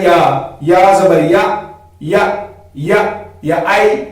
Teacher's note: وہ ہمیں کیا کرنا ہے کہ زبان کا جو بیچ والا حصہ ہے اس کو ہمیں اوپر کے تالوں سے ملانا ہے